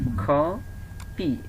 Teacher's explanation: এখানে কিন্তু এই যে আবার ক এর জায়গায় খ হচ্ছে